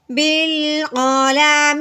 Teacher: آگے دیکھیں یہ ہے با الف، ٹھیک ہے، لیکن الف کو ہم نے نہیں پڑھنا، وجہ کیا ہے کہ الف کو پڑھنا تو کوئی زبر ہے نہ زیر ہے نہ پیش ہے، تو اس لیے ہم نے صرف با کو لام کے ساتھ ملا دینا ہے۔ یہ الف صرف دیکھنے میں نظر آئے گا لیکن پڑھنے میں ہم اس کو بالکل نہیں پڑھیں گے